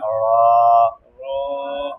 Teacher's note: জিহ্বার আগার উল্টা পিঠ, তার বরাবর উপরে তালুর সঙ্গে লাগাইয়া, তার বরাবর উপরে তালুর সঙ্গে লাগাইয়া, র।